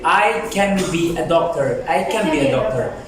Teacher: even sometimes N changes to M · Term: assimilation